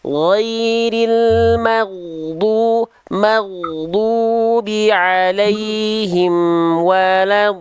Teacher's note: do-nya panjangkan 6 harokat, jangan kependekan. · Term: Mad lazim musakol kalimi